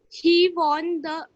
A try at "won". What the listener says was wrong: One. Not won, but we will learn pronunciations also. He won. Say one. Like we say O-N-E, one. Spelling is W-O-N. The pronunciation is not won, but one.